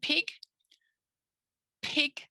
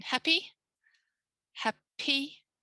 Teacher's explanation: see my lips there's no voice see it's at the front no voice